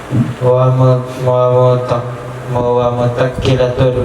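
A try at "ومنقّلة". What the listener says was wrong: Nun itu bukan tak. Wasaminuha munakkilatun.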